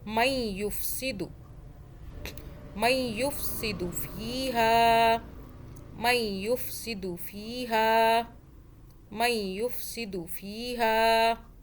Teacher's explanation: میم اور یا کو ہم نے ملایا، یا کی 2 مرتبہ آواز بنانی ہے پچھلے میم سے، پھر اوپر پیش کے ساتھ.